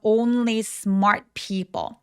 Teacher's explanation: 오우까지 굉장히 또렷하게 어우 입술 우까지 내밀어 주시고요. N과 l은 다 또렷하게 발음해 주셔야 돼요.